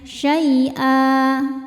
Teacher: Cara bacanya dipanjangkan 2 harokat ya tanpa ada bunyi n-nya. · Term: mad iwad